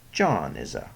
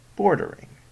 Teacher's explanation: one stressed followed by two slack syllables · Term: dactyl